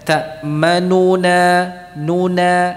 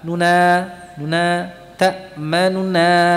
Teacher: Jadi antara huruf yang sebelumnya dan setelahnya itu lebih cepat nunya. Jadi harakatnya tidak sempurna. Ya. Jadi kalau dibaca dengan raum maka harakatnya tidak sempurna.